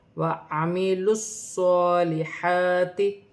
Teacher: صاد مشدد ہے، کھڑی زبر ہے، موٹے حرف میں سے ہے، سیٹی والا حرف ہے، جماؤ کے ساتھ ادا کیا جائے گا اور اپنے سے پہلے حرف کی حرکت کے ساتھ ملا کر پڑھا جائے گا. لام کو صاد کے ساتھ ملا کر پڑھا جائے گا · واو ساکن سے پہلے پیش ہے، واو مدہ بن رہی ہے، اسے بھی 1 الف کی مقدار کھینچ کر پڑھا جائے گا. صاد مشدد ہے، کھڑی زبر ہے، موٹے حرف میں سے ہے، سیٹی والا حرف ہے، جماؤ کے ساتھ ادا کیا جائے گا اور اپنے سے پہلے حرف کی حرکت کے ساتھ ملا کر پڑھا جائے گا.